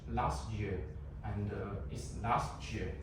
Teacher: You can omit the T, so it is called elision.